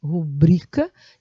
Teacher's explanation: a sílaba tônica de rubrica é bri